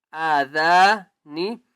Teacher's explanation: حمزہ کو ایک الف کی مقدار کھینچ کر پڑھیں گے اور ذال کو بھی ایک الف کی مقدار کھینچ کر پڑھیں گے